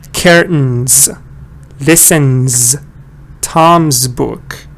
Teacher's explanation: you see the S letter S letter but the sound is z